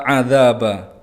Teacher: Adzaba, dza panjang 2 harokat karena itu mat tabi'i karena ada alif yang diikuti oleh fathah. Ba itu ada fathah tanwin yang diwaqafkan maka ini mat iwad, cara bacanya di fathah lalu dipanjangkan 2 harokat